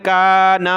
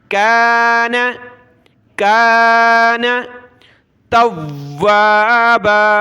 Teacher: کاف کو کھینچے، اس کے ساتھ الف پلس ہے، نون کو نہیں کھینچنا. کاف الف زبر کا، نون زبر نہ، کان.